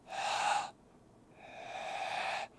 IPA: ħ